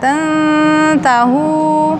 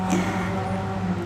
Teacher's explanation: Makhraj nun dengan ta berdekatan. Tantahu, nun ujung lidah menyentuh langit-langit bagian depan bawah gusi. Ta ujung lidah menyentuh gusi atas, maka dia berdekatan, namanya ikhfa aqrab.